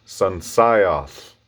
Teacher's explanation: making an L, putting your tongue where an L is, but then pushing the air out the sides of your tongue